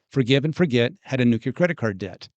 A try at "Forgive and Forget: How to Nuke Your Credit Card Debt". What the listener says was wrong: you said that very quick.